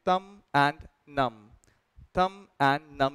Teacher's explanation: इसमें बी नहीं पढ़ते, thumb and numb is what you would say